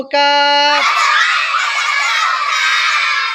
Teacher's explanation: 5 number মাখরাজ জিহ্বার গোড়া থেকে একটু আগে বাড়িয়া তার বরাবর উপরের তালুর সঙ্গে লাগাইয়া মধ্যখান পেঁচানো কাফ।